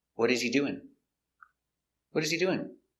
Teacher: This is an information question. You start with a question word, so the intonation goes down at the end.